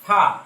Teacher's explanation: নিচের ঠোঁটের পেট সামনের উপরের 2 দাঁতের আগার সাথে লাগাইয়া